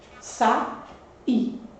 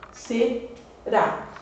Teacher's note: E a sílaba tônica das duas é a mesma, é a última. Palavras que têm a sílaba tônica na última posição são palavras que a gente denomina oxítonas.